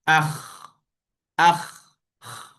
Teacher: Kita sebut huruf kha kita sukunkan dia. Dia akan ada ekor suara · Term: rakhawah